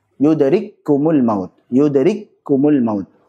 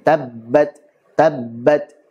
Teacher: Jadi ada jeda sejenak, itu sedang memberikan sifat syiddah dari huruf-huruf tersebut.